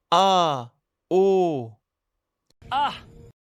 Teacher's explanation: C'est la petite rupture dans la gorge que l'on entend. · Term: coup de glotte